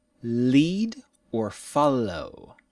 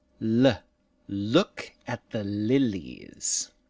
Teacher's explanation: touch behind your teeth and let the air move past the sides of the tongue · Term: English L sound